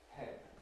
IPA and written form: pen (pen)